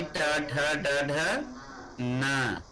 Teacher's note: ट ठ ड ढ न और स, इनका उच्चारण मूर्धा से होता है, इसलिए ये मूर्धन्य वर्ण कहे जाते हैं।